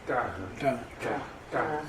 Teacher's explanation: It's just you curl your tongue back. · it's a retroflex. It's not a DR.